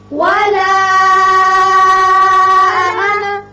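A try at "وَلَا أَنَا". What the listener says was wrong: یہ بھی مد منفصل ہے، 3 الف کے برابر آپ کھینچیں گے. یہ انا نہیں ہے، یہ انا ہے، نون زبر ہے، الف اس میں نہیں پڑا جائے گا، یہ واحد کا صیغہ ہے. ولا انا.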